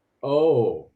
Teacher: it's stretched out even. Oh, with falling intonation.